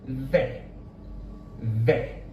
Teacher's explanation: the tongue is hitting the roof of the mouth to create that tapped sound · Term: a little tap